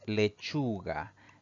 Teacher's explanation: La mayor fuerza de voz recae en la penúltima sílaba contando de derecha a izquierda. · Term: palabra grave